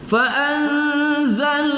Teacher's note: Qila lahum fa'an itu nun sukun bertemu zai pada ikhfa hakiki kita dengungkan membacanya